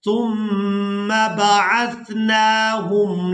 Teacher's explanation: सीनीन अददा सुम्मा बअस्नाहुम, सा को बिल्कुल नरमी के साथ अदा करेंगे और यहाँ मीम मुशद्दद पर गुन्ना किया जाएगा। आवाज़ को नाक के बांसे से अदा करेंगे, यानी जहाँ से नाक शुरू हो रही है वहाँ से आवाज़ गुन्ना की आवाज़ अदा होती है।